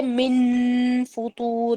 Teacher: من فطور میں فا باریک تھا تو میں نے اسمائلی فیس بنا کر فا کی طرف اپنے ہونٹ رکھے تھے